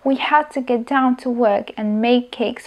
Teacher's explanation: we had to, vynechali sme d, to get down, vynechali sme t, and make cakes, vynechali sme d for the charity event. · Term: elision